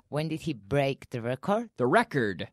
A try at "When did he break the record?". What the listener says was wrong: The record. Record. I need to hear record. That D at the end. Record.